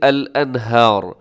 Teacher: کیا ہے جی الانہار، اس میں آخر میں را ہے تو را وقف میں کیا ہوگا، ساکن ہو جائے گا، تو ہم اس را کو موٹا پڑھیں گے